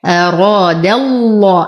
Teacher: نرقق الدال ونخلصها من تفخيم الراء · انتقل من فتحة الدال إلى تغليظ اللام في اسم الجلالة